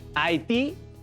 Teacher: haití tiene su sílaba tónica en ti